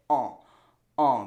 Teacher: So you make the sound by shooting your jaw back a little bit, bringing the tongue up to like where your uvula is, and then saying that nasal sound all the way up through your nose